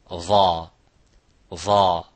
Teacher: So pronouncing the letter dha by taking out the whole tongue out or swallowing the tongue inside, it will not bring the proper makhraj of the letter dha. A letter dha, it is, as you can see, has a full mouth, tafkhim, it has isti'la, which when we sound it, it sounds like it's a heavy, very heavy letter.